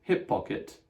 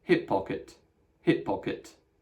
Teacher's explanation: you do extend the P in the middle by pronouncing two P's close together